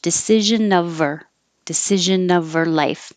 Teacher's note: you can connect the consonant to the vowel so now instead of decision of her with the h her get rid of the h